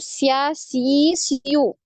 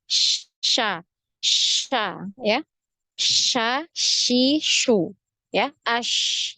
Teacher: Ini nafas dan udaranya, nafas dan suara ini ngalir untuk huruf shin ya. Makanya dia ada penyebaran udara di dalam mulut juga ya. Karena tengah lidah tadi ini nempel ke langit-langit, itu secara tidak ini nempelnya tidak betul-betul menempel, masih ada celah ya, masih ada jarak, jadi tidak tertempel betul.